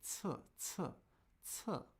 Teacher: But if you say t, t, t, you should be able to feel a little puff of air. It's aspirated or not aspirated.